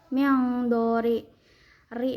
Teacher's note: Cara bacanya disamarkan sambil berdengung. Miangdori ri dibacanya secara tarkik atau tipis karena ro-nya barisnya di bawah atau kasroh